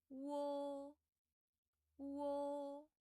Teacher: your mouth shape and your tongue position is sliding from wu to o. So like wo, wo.